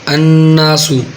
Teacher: یہ نون اس کے اوپر شد ہے، یہ نون مشدد ہے تو اس میں ایک الف یعنی دو حرکات کے برابر غنہ ادا کیا جائے گا